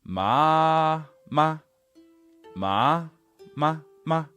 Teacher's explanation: huh so at the same time as not starting too low you also want to make sure that you finish nice and high up at first tone level